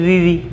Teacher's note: ऊपर दांतों के ऊपर वाली जो जगह है ना पीछे, वहाँ से बोलेगी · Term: मूर्धन्य स्वर